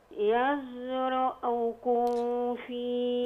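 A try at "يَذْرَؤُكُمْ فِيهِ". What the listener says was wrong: لا انت عملت اخفاء، اخفيت الميم في الفاء، ودي انت عارفة حضرتك دي حكمها ايه؟ الميم لما يكون بعدها فاء بنسميها ايه؟ اظهار شفوي. اظهر الميم يزرأكم فيه. ما اعملش، ما اقولش يزرأكم، دي غلط خطأ ولحن جلي.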